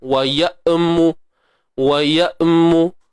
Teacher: Tahan suara hamzah tu. Sebab hamzah ini memang kategori huruf syiddah. Suara yang tidak terlepas. Ataupun erti kata lain, suara yang tertahan lah. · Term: Hamzah yang mati